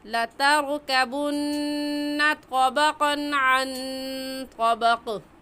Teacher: لتركبن میں را کو پر پڑھیں گے یا باریک، کیونکہ را ساکن سے پہلے زبر آ گیا، اس لیے اس را کو پر یعنی موٹا کر کے پڑھیں گے، اور موٹا کرنے کا طریقہ کہ آپ کے دونوں ہونٹ گول ہو جائے۔ تو را کو موٹا کریں گے، تا کو موٹا نہیں کریں گے، اس بات کا خیال رکھ کر پڑھیں کہ آپ کے را کے موٹا کرنے سے تا موٹا نہیں ہونا چاہیے، کیونکہ یہ تا ہے، طا نہیں ہے۔